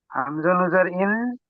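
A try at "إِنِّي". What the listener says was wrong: হামজা নুন, আলিফ থেকে এ পর্যন্ত পড়েছিলেন নুন তিন আলিফ টান দিয়ে। তো এখানে নু বললে হবে না, নুন পড়তে হবে। হামজা নুন জের ইন, নুন জের নি, ইন্নি, বলেন।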